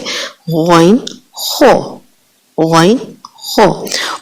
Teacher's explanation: ادنی حلق جو ہمارا منہ کی جانب ہے، وہاں سے غین خو، غین خو ادا ہوتے ہیں